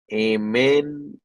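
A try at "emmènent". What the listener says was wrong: এমেন না, এটা অমেন হবে, হ্যাঁ ও এম অম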